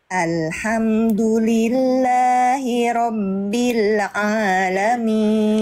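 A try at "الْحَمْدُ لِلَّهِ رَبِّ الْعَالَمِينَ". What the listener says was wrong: nah Sip Yang ini lebih bagus ya Masyaallah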